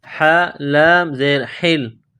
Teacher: یہ ہا ہے گلے کے درمیان سے نکلے گی، زور لگا کر نکالیں گے